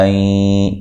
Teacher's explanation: یہاں نون ساکن کا ادغام مع الغنہ ہے ، ٹھیک ہے، غنے کے ساتھ ادغام کرنا ہے، این، ٹھیک